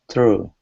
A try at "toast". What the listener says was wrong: Not a T, it's an S. Toast. Okay, so forget about the end of the word. Don't pronounce the end of the word. Okay, so I just want you to pronounce the S sound. So it's toast.